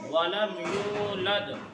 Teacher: वलम यूलद में या वाव पेश यू को एक अलिफ के बराबर खींचेंगे। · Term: वावे मद्दा